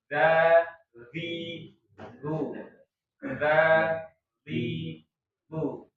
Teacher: ujung lidahnya harus keluar dan harus ada gesekan antara ujung lidah dengan ujung gigi seri atas